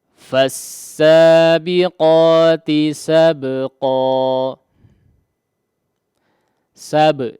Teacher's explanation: perhatikan ada di qalqalahkan, ya, huruf ba-nya diqalqalahkan